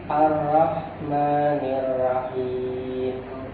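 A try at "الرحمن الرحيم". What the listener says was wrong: Rohnya tebalkan lagi. Ar-Rahmanir Rahim.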